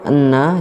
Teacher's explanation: dibaca dengan mendengung dan ditahan sesaat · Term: gunah